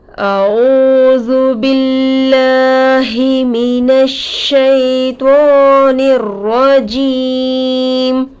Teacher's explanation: वाव साकिन से पहले पेश आकर है, वावे मद्दा होगा, थोड़ा खींचकर पढ़ेंगे · लफ्ज़े अल्लाह के लाम से पहले ज़ेर आकर है, लफ्ज़े अल्लाह के लाम को बारीक करके पढ़ेंगे